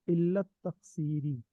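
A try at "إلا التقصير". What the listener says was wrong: ये आपने पढ़ा इल्लत तकसीरी, रा के नीचे शेर क्यों पढ़ा है?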